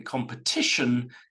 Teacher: We go from compete, competitive, competitor, so it's always the syllable after com, the pet bit, but in competition, it moves to the third syllable. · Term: stressed syllable